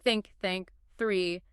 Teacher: Just air. No voice like in think. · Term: voiceless